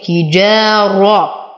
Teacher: ألف ساكنة ما قبلها مفتوح فهو من الطبيعي حركتين